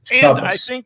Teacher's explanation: And also the accent is moved to the front in Ashkenaz